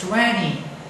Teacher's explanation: When we go to American language, we hear this 20. The T disappeared because of nasal N and E at the end